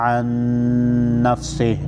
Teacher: नून मुशद्दद पर गुन्ना होगा